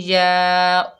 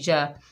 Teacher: wise, या के ऊपर ज़बर है, आगे अलिफ खाली है, ये अलिफ मद्दा है, एक अलिफ की मिकदार खींच कर पढ़ेंगे